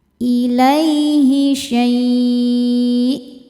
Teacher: Lai ada harfulin karena ada ya sukun sebelumnya baris fathah. Dibacanya lembut atau lunak.